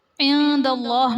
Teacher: عند اللہ میں نون ساکن کے بعد حروف اخفاء میں سے دال ہے تو یہاں پر اخفاء کا قاعدہ ہوگا، یعنی نون ساکن میں ہم غنہ کر کے پڑھیں گے